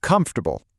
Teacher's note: in natural English, all the energy, all the stress is right at the beginning.